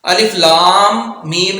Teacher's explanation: لام پر مد ہے، میم کو لام کے ساتھ ملانا ہے، علیحدہ علیحدہ نہیں پڑھنا